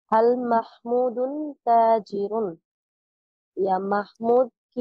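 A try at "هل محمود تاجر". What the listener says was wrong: একটু প্রশ্ন ভঙ্গি দিয়ে, হাল মাহমুদুন তাজিরুন, একটু ভঙ্গি দিয়ে পড়েন।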